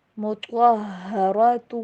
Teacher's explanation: آواز کو میم کے ساتھ مکس کر کے پڑھیے، ازواج مطہرۃ، ہا کے پر سٹریس دینا ہے کیونکہ یہاں پہ تشدید ہے